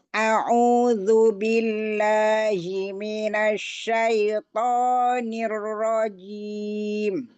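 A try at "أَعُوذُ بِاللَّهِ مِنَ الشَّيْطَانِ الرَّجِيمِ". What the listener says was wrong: Ya, nanti latihan ain ya, ya. Masih masuk hidung dia.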